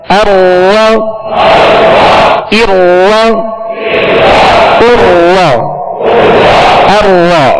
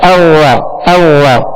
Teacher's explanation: रा को उसके मखरज से अदा करेंगे तो रा में कपकपाहट सी होगी, कपकपी पैदा होगी, जिसे कहते हैं तकरार। ये मुशाबत तकरार है इसमें, और मुशाबत तकरार के बगैर अदा करेंगे तो रा अवा पढ़ा जाएगा, अव्वा अव्वा।